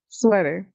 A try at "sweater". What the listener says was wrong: Sweater. No, that's a T. Now say it with the T.